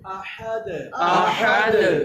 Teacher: دال حروف قلقلہ میں سے ہے، تو جب ساکن ہو جائے گا تو اس میں قلقلہ بھی خوب ظاہر ہوگا